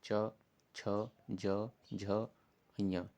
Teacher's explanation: ठीक, अब ये देखिए चा जैसे रीड करते हैं तो आप जबान जो होती है ऊपर वाले तालु से टच करेगी, छा भी टच करेगी, ज भी टच करेगी, झा भी टच करेगी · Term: तालव्य व्यंजन